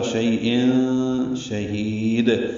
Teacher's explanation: تنوین کے بعد شین آنے کی وجہ سے اخفا ہوگا. شیء شہید، ہا کو اقصی حلق سے ادا کریں گے، لمبا کریں گے، دال ساکن پہ وقفاً قلقلہ کریں گے.